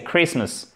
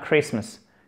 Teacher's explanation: c'est un I court. Le T ne se prononce pas.